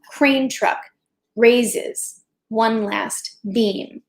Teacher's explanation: truck normally would get an emphasis but because of the way she's written the sentence she's forcing you not to emphasize it